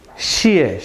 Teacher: the first is fourth tone the second one is neutral